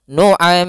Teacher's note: Kemudian di sini adalah huruf ra. Ra yang dia didahului dengan huruf sukun, maka ra-nya menjadi ra yang tipis, ra tarqiq. Ra tarqiq. Maka waman nu'ammirhu dibaca dengan tipis.